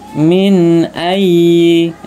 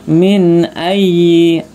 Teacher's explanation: nun sukun bertemu alif dibaca jelas ya, idhar ya. Alif termasuk huruf idhar, maka dibaca jelas.